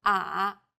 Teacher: The third tone goes down from a low pitch, then rises to the middle of the pitch range.